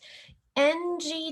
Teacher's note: back of the tongue and soft palate ng together you heard in the video is its own phoneme